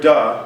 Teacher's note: the word da the second format drops after the d sound the first formant raises after the d sound